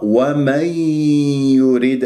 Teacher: والراء مرققة لأنها مكسورة